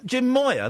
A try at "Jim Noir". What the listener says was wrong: No, Noir. You know, French. That in French. No, with an N at the beginning. Noir.